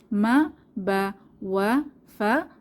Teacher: ঠোঁটে বাতাস চালু করে উচ্চারিত হয় তাহলে আমরা বলতে পারি এভাবে মা বা ওয়া ফা ঠোঁট থেকে বের হয়